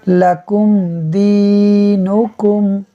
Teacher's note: میم ساکن کے بعد دال حرف با اور میم کے علاوہ ہے، اظہار شفوی ہوگا، یعنی ہم میم ساکن میں غنہ نہیں کریں گے۔